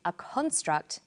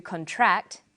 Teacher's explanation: pronounced extract the emphasis is now on the first syllable and this pattern of first syllable emphasis for the noun form and second syllable emphasis for the verb form